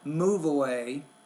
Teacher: Move away, you want to work on blending. Take the final sound, the V, blend that with the first sound of the next word.